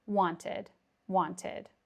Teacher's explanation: I probably would pronounce the T, wanted. A very soft T, wanted, wanted.